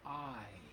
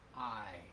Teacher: It's a blend of vowel sounds. So, I is two sounds. It starts with ah and ends with, actually, it ends with E. I. It's two sounds, and they blend together. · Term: diphthong